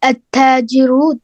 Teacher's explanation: Lam Shamsi, the lam is written but it is not pronounced, and in Lam Khamari, the lam is written and pronounced.